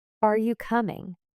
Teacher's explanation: Your voice rises on coming.